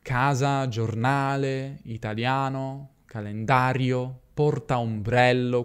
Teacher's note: Ora, l'accento fonico è abbastanza prevedibile in italiano, infatti il 75% circa delle parole italiane sono piane, cioè l'accento cade sulla penultima sillaba: "casa", "giornale", "italiano", "calendario", "portaombrello". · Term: parole piane